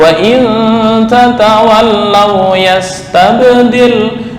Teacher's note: tasdid di lam nggak boleh ditekan terlalu lama